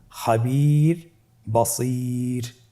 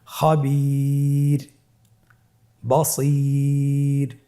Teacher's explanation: র হরফটি ওয়াকফের কারণে সাকিন হলে তার ডানে ইয়া সাকিন থাকলে তাহলে রকে পাতলা করে পড়তে হবে।